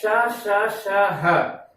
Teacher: चूंकि इनका जब उच्चारण किया जाता है श श श ह, तो जिह्वा इस प्रकार से मसूड़े या उस मूर्धा के ऊपर इस प्रकार से इस स्थिति में होती है कि वहां वायु को निकलने के लिए बहुत ही कम स्थान रहता है, तो वायु संघर्ष करती हुई बाहर आती है और संघर्ष के कारण ये वायु गर्म हो जाती है और गर्म होकर मुख विवर से बाहर आती है। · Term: ऊष्म व्यंजन